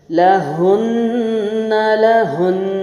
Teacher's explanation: ज़बर के साथ भी गुन्ना, और जब मैंने वक्फ किया हरकत ख़त्म की, लेकिन तब भी गुन्ना कायम रहा